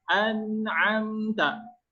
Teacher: Maka dibaca dengan jelas. Huruf ain makhrajnya terletak di wastul halqi, yaitu di tengah tenggorokan.